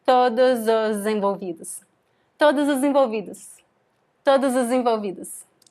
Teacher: When we make the liaison, the connection, we say todos os envolvidos. So we have this funny sound, zozem